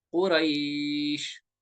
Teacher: या लीन है, या लीन के बाद इसमें हम वक्फ की वजह से साकिन करेंगे तो बनेगा ओ रईश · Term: मद लीन आरिज